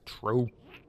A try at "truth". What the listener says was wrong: But when you say truth, you have to stick your tongue out.